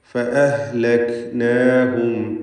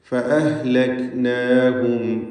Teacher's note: കാഫ് വ്യക്തമാക്കി അതിൻ്റെ സിഫത്തുകൾ നൽകി ഉച്ചരിക്കണം. അതിന് ഖൽഖല വരരുത്. ഫഅഹ്ലക് എന്ന് ശബ്ദം ചലിപ്പിക്കരുത്.